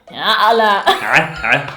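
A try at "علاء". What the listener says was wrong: Be angry. The ayn needs to come out. You're swallowing it.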